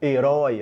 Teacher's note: então nós temos ali um ditongo aberto